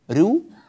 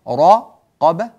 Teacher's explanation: الراء المضمومة هنا مرققة، الراء التي بعدها في كلمة رقبة مفخمة